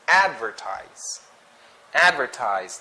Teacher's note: So for this word, the stress is in the first syllable, which is advertise.